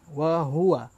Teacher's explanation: Ha ini mesti mau rasa. Di pangkal kerongkong.